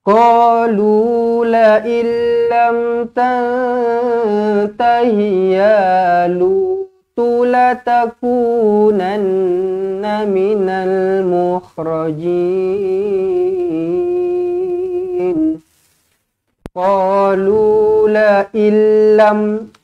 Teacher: Nun kosong bertemu dengan lam sabdu. Ingat, bila jumpa dengan lam sabdu, terus masuk sahaja. Tak payah dengung-dengung lagi dah. Dekat sini ada nun kosong ke, ada apa ke, tak payah dengung lagi dah. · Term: idgham bila gunnah